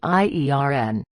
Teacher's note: But here is the crazy secret about American English: even the superhero is pronounced iern man. The R and the O totally switch places when we speak. It sounds exactly like the word earn, as in earning money, with an I at the front.